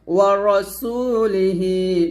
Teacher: ওয়া রা হবে না, র বলবেন মোটা করে